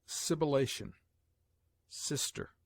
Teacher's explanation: S has a hissing sound